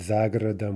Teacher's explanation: За городом with the stress shifting to the preposition.